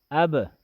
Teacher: دیکھیں حمزہ با زبر اب، اب حمزہ کے اوپر زبر ہے، اس میں منہ کھلا رہتا ہے